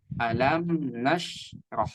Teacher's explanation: Di sini ada shin yang dia itu sukun. Shin yang dia itu sukun dan ini tidak memantul ya